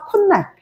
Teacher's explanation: 비음화 역행 동화로 뒤에 있는 비음이 앞에 있는 디귿 영향을 주는 거야 그래서 디귿이 니은으로 발음되며